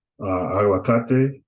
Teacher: Aguacate, that's three syllables. So the emphasis is going to be on ka